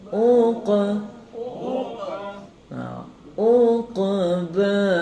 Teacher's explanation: Tadi ada yang baca uka, kalau uka jadi kaf. Berhati-hati, tebalkan.